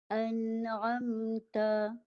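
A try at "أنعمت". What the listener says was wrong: Tadi baca yang ini dia baca satu bunyi. Dia tak boleh. Hamzah dengan nun ni. Hamzah ni satu bunyi, nun satu bunyi. Tadi baca satu bunyi, dua-dua ni satu bunyi, tak boleh. Tadi baca an. Jadi hamzahnya dah sengau, dah dengung. Dah masuk hidung. Yang masuk hidung nun saja. Jadi ni satu bunyi. Jadi ada dua bunyi. Nampak ada dua bunyi tu.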